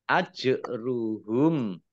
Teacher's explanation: jim sukun bacaan kolkolah atau memantul dibaca ditampakkan pantulannya.